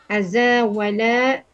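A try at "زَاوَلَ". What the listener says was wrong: Zawala, tidak ada A. Zawala.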